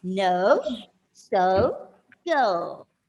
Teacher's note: The diameter of your mouth is not the same while you pronounce the letter O. It should be bigger and then it should become smaller.